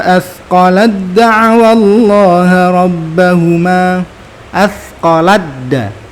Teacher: taknya udah nggak ada lagi, nggak kedengaran lagi karena udah masuk secara sempurna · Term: idgham mutajanisain